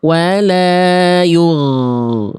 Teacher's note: Tuh ngalir, nggak ada bunyi e-nya di ujung. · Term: ghain